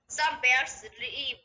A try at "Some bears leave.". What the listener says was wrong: 또 R 소리 또 집어넣는다. Some bears leave. 어떤 사람들이 자꾸 이런 소리 넣으면은 영어 잘하는 줄 아는 사람들이 있는데 완전히 헛방이야. 혀를 이렇게 뒤로 말아 넣는다고 영어 잘하는 거 아니야?